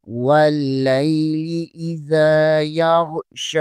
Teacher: واللیل اذا، یا زبر غین یاغ، شین کھڑی زبر شا، یاغ شا، شین کے اوپر کھڑی زبر ہے، اسے 1 الف کے برابر کھینچنا ہے